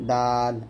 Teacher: দাল জিহ্বার আগা সামনের উপরে দুই দাঁতের গোড়ার সঙ্গে লাগিয়ে পাতলা উচ্চারণ করবেন